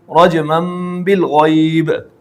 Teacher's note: لیکن جس تنوین کے بعد با ہو تو اب اس تنوین کو میں آپ نے نون کی آواز کو نہیں لانا ہے بلکہ آپ نے میم کی آواز کو لانا ہے۔ یہ جو میم لکھ دیا گیا ہے یہ علامت کے طور پر لکھ دیا گیا ہے کہ یہاں پر آپ نے تنوین کو میم سے بدلنا ہے۔